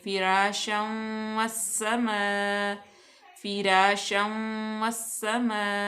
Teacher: यहाँ पे इदगाम का कायदा लागू हो रहा है क्योंकि दो ज़बर के बाद आ गया वाव हरूफ यरमल उनमें से, तो यहाँ पे हम गुन्ना करेंगे।